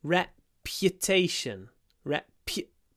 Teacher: what's interesting here is that there's a little y after the P